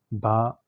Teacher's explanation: با ہونٹوں سے ادا ہوتی ہے، ہونٹوں کی تری سے